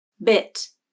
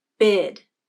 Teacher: When I comes before a voiceless consonant, like T in the word bit, the I vowel is said a little bit faster than when it comes before a voiced consonant, like D in bid. Listen to the difference in the length of the I vowel in the words bit and bid. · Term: vowel length